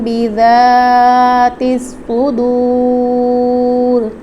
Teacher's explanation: بذات الصدور میں ذال الف زبر ذا ہے، تو ذال کو نرمی سے ادا کریں گے، جبکہ صاد کو پر اور موٹی آواز سے پڑھیں گے